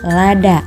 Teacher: vokal a Tengah atas tak bundar